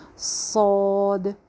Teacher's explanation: صاد موٹا حرف ہے، سیٹی کے ساتھ ہی ہے لیکن موٹا ہے ، سین اور صاد کا مخرج ایک ہی ہے، یعنی نیچے